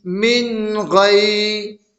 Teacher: نون ساکن کے بعد حروف حلقی میں سے غین آ رہا ہے، نون کی آواز کو ناک میں ظاہر کر کے بلا غنہ کے جل پڑھیں گے، اس کو اظہار کہتے ہیں۔